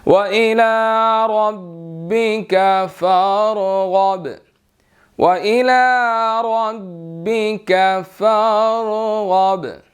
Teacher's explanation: ربک کا جو ہے وہ را موٹا ہے، اور فرغب را اور غائن جو ہے وہ موٹے ہیں، اور با کے اوپر جو ہے وہ کلکلا ہوگا